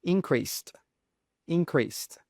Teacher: And note, when you have a word that ends in sed, we pronounce it as a st. So you pronounce that S sound, and then the ED is pronounced as a T sound.